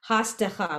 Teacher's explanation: in this case, the samech and the dalid have no sound. It's silent. So it's hasdecha, which is what she did.